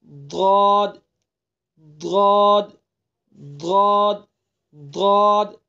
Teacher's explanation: नहीं होगा और जबान की नोक को इसको बचा करके रखेंगे सिर्फ करवट डाढ़ पर लगेगी और पिछला हिस्सा तालू पर लगेगा तो यह हर्फ अदा होगा · دیکھیے زبان کی نوک ذرا سی بھی اگر دال اور ضا کے مخرج پر لگی تو اس کے یہ ضاد صحیح طریقے سے ادا نہیں ہوگا۔ اور زبان کی نوک کو اس کو بچا کر کے رکھیں گے، صرف کروٹ ڈاڑھ پر لگے گی اور پچھلا حصہ تالو پر لگے گا تو یہ حرف ادا ہوگا ضاد ضاد ضاد ضاد۔